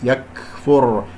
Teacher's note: هنا كاف ساكنة فيها همس ، يكفر، لطيف، لا أقول يكفر قلقلة أو يكفر مبالغ، والفاء